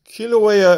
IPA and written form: ˌkɪləˈweɪə (Kīlauea)